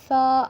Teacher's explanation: تو اس کا بھی جو مخرج ہے وہ بھی بہت سمپل ہے کہ زبان کا جو سرا ہے وہ دونوں ہونٹوں کے درمیان سے آئے. کیونکہ یہ نرمی والا حروف ہے، اس میں جب ہم ادا کرتے ہیں تو ہمیں فیل ہوتا ہے کہ یہ نرمی سے ادا ہو.